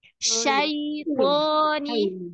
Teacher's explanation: Huruf ya yang disukun itu i sekali ya Ibu, jangan sampai miring e.